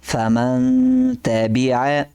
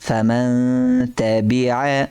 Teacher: اخفاء، یعنی ہم یہاں غنہ کریں گے، کیونکہ نون ساکن کے بعد حروف اخفاء میں سے ایک حرف آ رہا ہے